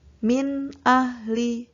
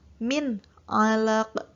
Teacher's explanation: huruf nun sukun atau tanwin tadi dibaca jelas, tidak dengung, tidak samar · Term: izhar